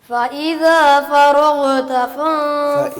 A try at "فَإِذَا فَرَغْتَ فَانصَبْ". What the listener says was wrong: یعنی غین کے اوپر قلقلہ مت کریں، ہلائیں مت. فرغت. دیکھیے ایک ہے چیز فراغ، فراغ یہ نہیں، کیا کرنا ہے؟ فراغت یہ کرنا.